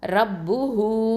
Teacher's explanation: அடுத்ததான் ரா ஃபதா ப ஷதா ரப், ப தொம்மா பு, ரப்பு. ஹ தொம்மா வாவ் சகைரா ஹூ 2 ஹரக்கத்தை நீட்டணும், ரப்பு ஹூ. இதுக்கு பேர் வந்து என்ன சொல்லுவோம் அப்படின்னு சொன்னால், இந்த குட்டியாக வாவு போட்டிருக்கு பார்த்திங்களா, இதுக்கு பேர் வந்து மத்து சிலத்து சுகரா அப்படின்னு சொல்லுவோம்.